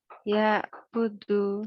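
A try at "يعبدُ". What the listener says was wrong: Lebih kuat sedikit, setengah mengalir pada ain. Ya, budu.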